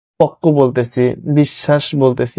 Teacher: যদি ব ফলা থাকে সেগুলো হচ্ছে ব এর উচ্চারণ হয় না, বাট যে শব্দের সাথে যুক্ত থাকে সেটি মানে দ্বিতীয় উচ্চারণ হয়, দুইবার উচ্চারণ হয়